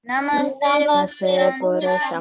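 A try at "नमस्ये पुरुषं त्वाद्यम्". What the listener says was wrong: It's not namaste, okay? It's namasye. Namasye Purusham Tvatyam.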